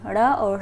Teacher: जीभ जो है हमारी वो थोड़ी सी मुड़ती है और फिर झटके से हट जाती है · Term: उच्छिप्त व्यंजन